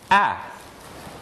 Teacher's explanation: that's involved in bringing the tongue forward is the sound a the tongue goes forward the lips are unrounded it's not tense but the tongue goes down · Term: ash